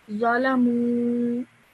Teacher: just stretch the mu out for 2 seconds because of the vowel madda